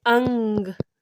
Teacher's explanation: हवा मुंह से तो निकलती है पर साथ साथ में नाक से भी निकलती है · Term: अनुनासिक